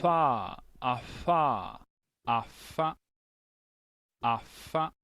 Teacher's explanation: लेबियोडेंटल मतलब लेबिया नीचे का होंठ, ऊपर का दांत, डेंटल दांत